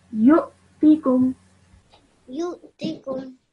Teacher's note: a slight jerk sound because the hamza has a sukoon on it.